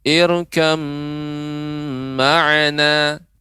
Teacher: irkam ma'ana disertai dengan gunnah yang dipanjangkan.